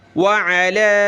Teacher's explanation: اس علا پہ مد نہیں، ہم نے نہیں کھینچا